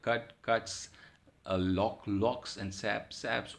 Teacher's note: All the sounds, the word ending sounds are all voiceless. So the realization, that is the S form, is realized as sir, not z, not I, not is, as was the case in sibilants, as was the case in voice sounds.